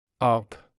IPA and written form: ap (ափ)